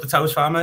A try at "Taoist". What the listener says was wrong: I pronounce it Dao. It's spelled T, but I pronounce it Dao.